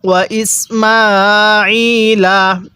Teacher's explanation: এ আইনের মধ্যে আমরা এক আলিফ টান দিব